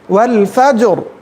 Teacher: فتحہ آنے کی وجہ سے را کی ادائیگی موٹی ہوگی